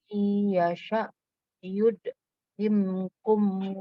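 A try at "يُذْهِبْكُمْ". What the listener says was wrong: Ini hibkum, bukan himkum, tapi hibkum wa ya'ti bi khalqin. hibkum bukan himkum.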